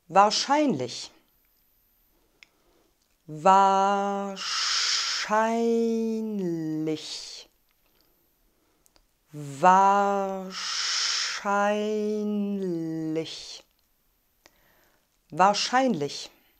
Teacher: Die Betonung liegt auf der Silbe Schein. Das R in wahr wird vokalisch ausgesprochen.